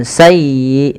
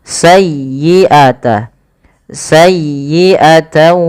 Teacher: palafal sayyi tekan di huruf ya-nya karena dia ya tasdid dan lembutkan ya